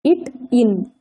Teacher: நாவினது நுனி அன்னத்தினது நுனியை தொடுவதால் பிறக்கின்றன